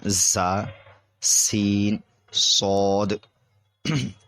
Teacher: ان 3 حروف یعنی زا، سین، صاد کو ادا کرتے وقت سیٹی کی طرح تیز آواز نکلتی ہے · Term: سیٹی والے حروف